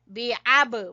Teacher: अमली ही, बे अब, बा के ऊपर आपने कलकला करना है